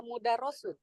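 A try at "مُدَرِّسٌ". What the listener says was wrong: Mudarrisun. harakatnya di bawah tasydid, dia kasrah. bawah tasydid, dia kasrah. Kalau di atas tasydid, baru jadi fathah.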